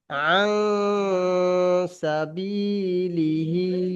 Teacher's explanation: নাকের মধ্যে না ইয়ে করে পড়তে হবে। আওয়াজটি নাকের মধ্যে নিয়ে গিয়ে একালিপ গুণনা করে পড়তে হবে